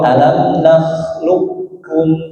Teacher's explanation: langsung masuk huruf kaf. Jangan menyisakan qof ya.